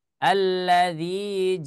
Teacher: ada berhenti yang dipaksa karena suaranya tertahan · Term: syiddah